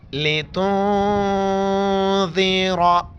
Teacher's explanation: रा के ऊपर ज़बर है तो रा को मोटा करके पढ़ेंगे